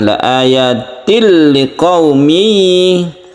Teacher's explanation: ini juga ditekan idgham bila guna, cuma ini tidak berdengung karena bertemu lam